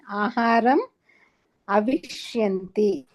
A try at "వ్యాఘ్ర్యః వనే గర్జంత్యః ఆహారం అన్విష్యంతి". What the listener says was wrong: Madam ఒకటి first point, అది వ్యాఘ్రః కాదు, వ్యాఘ్ర్యః అని పలకాలి. స్త్రీలింగం అది. ఓకే. అన్విష్యంతి అని పలకాలి, అవిష్యంతి కాదు.